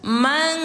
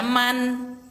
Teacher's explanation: Suara nun sukun ini kita samarkan ke huruf kaf lalu disertai dengung dua harakat. Jadi bunyinya mang. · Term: ikhfa